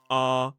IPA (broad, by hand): ɑː